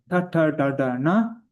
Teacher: the tongue curled back and touching the top of the roof of the mouth